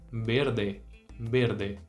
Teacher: a letra e tem o som fechado